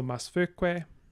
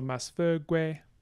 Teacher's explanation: We then delete the schwa, so Masfoque. Then we do intervocalic voicing, so Masfogue.